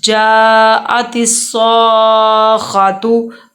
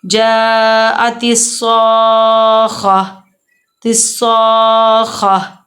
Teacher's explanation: اب ہم نے ادھر وقف کرنا ہے، اور وقف کی وجہ سے ہم نے تا کی آواز ہا کی نکالنی ہے۔ جاءت الصاخہ، الصاخہ، تا کی ہم نے آواز نہیں نکالی، ہم نے ہا کی آواز نکالی ہے۔